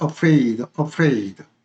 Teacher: afraid는 어로 이 A가 어로 발음이 됐습니다.